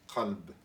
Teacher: c'est juste le côté un petit peu plus rauque, donc forcément plus en arrière, qui sort plus du fond de la gorge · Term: qaf